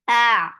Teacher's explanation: Fatha, open your jaws. The sound is short.